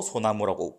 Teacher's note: 솔 플러스 나무가 되면 여기서도 리을이 날아가서 소나무라고 부르죠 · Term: 리을이 탈락